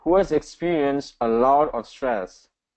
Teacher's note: so a lot should be the stressed idea here